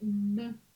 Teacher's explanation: if you take me it's a nasal because the air comes out through the nose